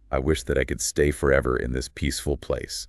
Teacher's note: wish has that short I sound and a clear sh at the end